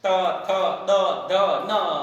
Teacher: जीभ आकर दांतों से टच होती है